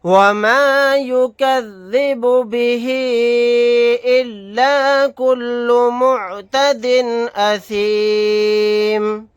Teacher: وَمَا يُكَذِّبُ بِهِ إِلَّا كُلُّ مُعْتَدٍ أَثِيمٍ، یہاں پر ہا کے نیچے کھڑی زیر ہے، کھڑی زیر حروف مدہ کی برابر ہے۔ کھڑی زیر کے بعد حمزہ دوسرے کلمے میں ہے الف کی شکل میں، تو یہاں پر مد منفصل کا قاعدہ ہوگا۔ اس مد کو 3 الف کی مقدار کھینچ کر پڑھیں گے